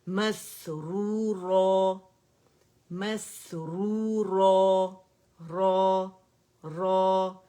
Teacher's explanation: مد عوض بنے گی, 2 کاؤنٹ کے لیے آواز اوپر جائے گی, یعنی تنوین کو الف مدہ سے بدل دیں گے.